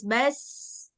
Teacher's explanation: sin juga punya sifat rokhawah, jadi dia nggak boleh putus. Harus terus, bas. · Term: huruf sin